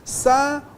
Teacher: semivogal U, vogal AN, semivogal U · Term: tritongo nasal